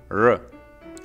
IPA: ɻ